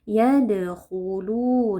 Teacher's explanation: huruf khof tebal kita baca dengan mengangkat pangkal lidah. Lu di sini ada mad thbi'i karena ada wau sukun sebelumnya dommah dibaca panjang dua harakat. · Yadkhuluna yadqalah sugra. Qalqalah sughra adalah qalqalah yang terjadi di tengah-tengah kata atau kalimat. Jadi huruf dalnya di sini kita pantulkan.